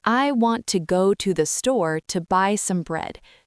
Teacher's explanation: Want, go, store, buy, bread are stressed. They are louder and longer. The little words to, the, some are quick and quiet, almost swallowed. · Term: stress-timed